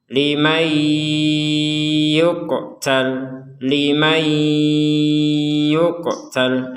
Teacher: nun sukunnya dimasukkan ke ya disertai dengungan sehingga dibacanya limay yuqtal, limay yuqtal.